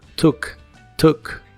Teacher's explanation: la doble o se pronuncia como una u corta y explosiva took took y lo usas en ideas como I took a